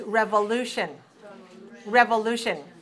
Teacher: So this is 4 syllables. Stress on the third